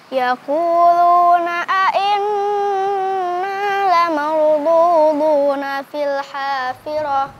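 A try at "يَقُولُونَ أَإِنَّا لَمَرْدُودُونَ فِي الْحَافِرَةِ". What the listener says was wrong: Tadi inna la marduduna ya. Tadi agak sedikit panjang ya ketika melafalkan lamnya.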